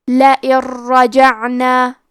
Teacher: ادغام کا معنی ہے حرف کو حرف میں داخل کرنا، تو ہم نون ساکن کو را میں ملا کے بغیر غنہ سے لیکن تشدید کے ساتھ یہ حکم کو ادا کریں گے